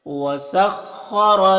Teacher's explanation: خا حروف مستعلیہ میں سے پر پڑھیں گے، را کو پر زبر، را کو پر پڑھیں گے